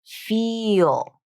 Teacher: the full pronunciation is the long E vowel, the long E sound, the tense sound